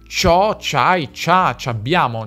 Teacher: In questi esempi questa costruzione si scrive proprio così: “ci hai”, “ci ho”, “ci ha”. Anche se si pronunciava e si pronuncia / tʃo/, / tʃai/, / tʃa/, / tʃabbjamo/, cioè la /i/ non si sente.